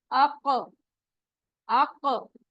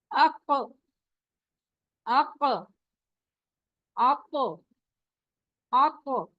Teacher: ये कहते हैं जायद आवाज, यानी एक आवाज ज्यादा निकलती है, उसमें आवाज टकरा कर वापस आती है, बाउंसिंग साउंड होती है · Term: कलकला